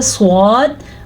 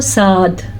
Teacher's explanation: پر ایسے ہوتا ہے سواد اور پر نہ پڑھیں تو ساد. یہ ہے پر اور باریک کا فرق. بار بار پر حروف آتے ہیں تو آپ کو پتا ہونا چاہیے پر کیسے کہتے ہیں اور باریک کیسے کہتے ہیں.